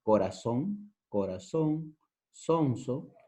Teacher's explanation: Pronunciamos el sonido de la C y de la Z como si fuera S. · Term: el ceseo